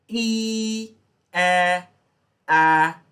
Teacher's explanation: when I pronounce E, my lips are spread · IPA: /i:/